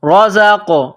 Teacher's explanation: زا کو قاف کے ساتھ ملانا ہے. قاف ساکن ہے تو یہاں پر قلقلہ کرنی ہے.